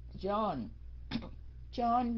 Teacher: John là mình xuống giọng ở cái âm N cuối cùng, cái âm Y mình không có đọc.